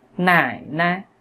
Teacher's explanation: cái từ nai này nó khá là cao chứ không phải là giống như những từ khác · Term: thanh nhẹ